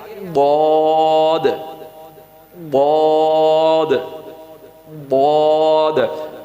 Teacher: اچھا میرے بھائیو یہاں پر ضاد کو ہم نے پر پڑھنا ہے. ضاد میں اینڈ پہ دال کی آواز سنائی دے گی